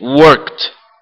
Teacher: Ela é consonantal, é como se fosse um encontro terminado em T.